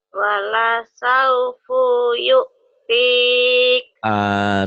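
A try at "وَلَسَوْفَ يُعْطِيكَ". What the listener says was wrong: Salah tanda melulu. Jangan wala saufu, wala saufa. Ulang.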